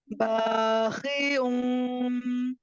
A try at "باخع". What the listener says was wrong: خا کی ادائیگی کو درست کیجیے. خا پر حروف میں سے ہے.